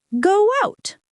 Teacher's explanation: The word out begins with an ow sound. To connect them smoothly, we naturally add a small w sound in the middle.